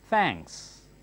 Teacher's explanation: your tongue must stick out and touch the upper teeth